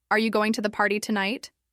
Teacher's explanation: The questions rise at the end. The important words are stressed.